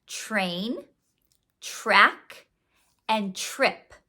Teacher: When we have TR next to each other in a word, it sounds more like ch, r. It sounds almost like the digraph CHR.